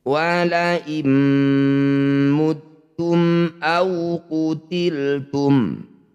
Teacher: Wala muttum au qutiltum, mim sukun bertemu hamzah disebut bacaan idhar halki. Bunyi mim baca jelas, rapatkan bibir, tidak usah berdengung.